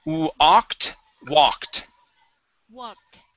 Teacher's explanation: we're going to use an ah sound here on wa